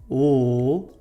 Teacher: So if I make the L sound, L, my tongue is going to come forward. My tongue tip will be up and it's going to be touching the back of my top gum ridge.